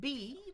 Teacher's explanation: Lips, exploding air. But now I'm voicing too.